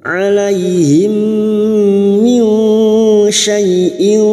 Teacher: Alaihim mim sukun bertemu mim idgham mimi. Memasukkan bunyi mim sukun kepada mim berikutnya disertai mendengung selama 3 harakat.